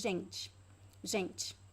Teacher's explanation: I pronounce the T, but I don't pronounce the E at the end.